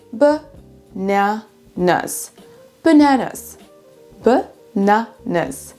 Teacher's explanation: il y a seulement un seul des A qui se prononce comme un A, c'est le deuxième, et les deux autres ça va être ce fameux schwa sound